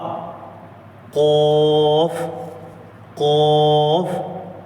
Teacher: قوف قوف، زبان کی جڑ بالکل لاسٹ والا حصہ زبان کا، زبان کی جڑ اوپر کے تالو سے لگائیں تو قوف نکلتا ہے.